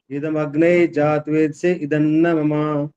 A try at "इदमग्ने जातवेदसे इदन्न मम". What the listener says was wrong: अब यहाँ पर भागदड़ क्यों मचाई है? यहाँ पर इदमग्ने जातवेद से इदन्न मम इकट्ठा बोल दिया सारा।